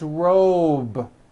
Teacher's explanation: a voiced sound job it's not jump with an unvoiced P keep the voicing going throughout the whole word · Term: voiced be ending